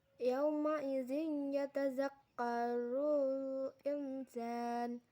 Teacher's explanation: Terdapat hukum bacaan ikfa karena nun sukun bertemu huruf sin. Cara membacanya samar dengan dengung dan ditahan selama 3 harokat.